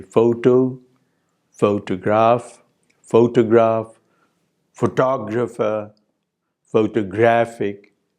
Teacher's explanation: So the primary stress is shifting in these words as new affixes are added to them. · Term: stress shift